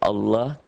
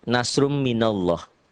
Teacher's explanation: dibaca tebal berbunyi o Allah karena sebelumnya berbaris di atas